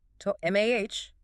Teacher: The first O collapses into a schwa. To MAH. Notice the vertical drop of the jaw on MAH. · the focus is the long, open ah sound in the middle and the complete stoppage of air on the internal T